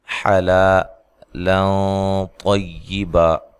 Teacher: یہاں نون تنوین کا اخفا مع غنہ ہے، موٹا اخفا ہے۔ طا کو موٹا ادا کرنا ہے، وقف کی صورت میں 1 زبر کو ختم کر دینا ہے اور الف مدہ کے برابر اس کو لمبا کرنا ہے۔